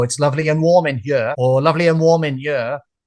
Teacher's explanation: the word ear and the word year, Y E A R, for some speakers from Wales, they would say them all the same